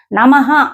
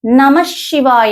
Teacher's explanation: నమ అని ఆపకుండా హ అనే శ్వాస బయటకు వస్తోంది, అది నమః అవుతుంది. అంటే ఆ విసర్గ పూర్తిగా పలుకుతున్నాం అనమాట.